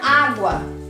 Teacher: Nós temos uma palavra que é encontro vocálico, pois as vogais estão na mesma sílaba, se unem, porém, ela é um ditongo, porque o U ganha sentido de semivogal